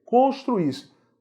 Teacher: Duas vogais juntas, vogal mais vogal, hiato. Segunda vogal representada por I. O I é tônico.